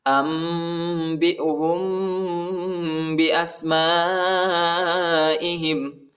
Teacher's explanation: حمزہ کو سین کے ساتھ ملائیں گے اور الف پر جو ہے بڑا مد آئے، اس کو تقریباً 3-4 سیکنڈ تک کھینچنا ہے. اور یہ جو ہے یہ حمزہ ہے، ٹھیک ہے، اس کو زیادہ نہیں کھینچنا ہے.